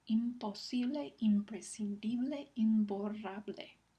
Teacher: La P y la B son sonidos bilabiales. Entonces, la M, que también es bilabial, se asimila al punto de articulación del siguiente sonido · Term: asimilación